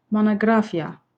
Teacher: Üçüncü hecadak ki, digər hecalara nisbətən monoqrafiya daha qüvvətli tələffüs olunur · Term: vurğu